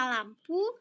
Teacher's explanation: bunyi yang menghambat aliran udara bagian tengah yang memberikan jalan aliran udara melalui sisi-sisi lidah sedangkan bagian tengah lidah menyentuh langit-langit mulut atau alveola Rage yaitu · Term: lateral